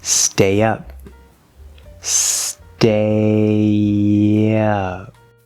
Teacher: we're going from a the diphthong a to uh the schwa sound and we get that small little y sound in between